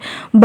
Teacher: Option बी सही answer है। बा जो है इसका उच्चारण स्थान ओष्ठ है, यह अल्प प्राण है और घोष वर्ण है।